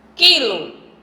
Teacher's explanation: Quilo, eu não pronuncio o U.